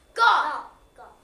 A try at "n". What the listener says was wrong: There's no G there. That's an N. Nah.